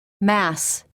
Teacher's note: For the s and z, there is also air passing through the tip of the tongue. But the tongue is not touching the teeth. It is touching a little bit behind, on the gum ridge.